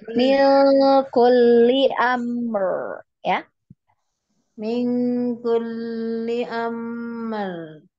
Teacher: kemudian lam ditasdid, jangan ditahan lama ya. Jangan mil kulli karena dia tidak ada gunnah.